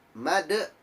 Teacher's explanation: huruf Dal makhrojul huruf nya ya ini di ujung lidah bertemu dengan gusi atas